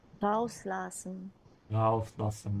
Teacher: This is a supplemental verb, so emphasize the prefix.